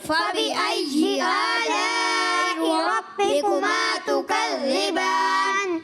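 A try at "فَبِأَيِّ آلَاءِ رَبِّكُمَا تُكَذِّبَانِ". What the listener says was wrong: अच्छा बेटा, अच्छी कोशिश है आपकी, लेकिन या और जीम में फ़र्क है, ठीक है।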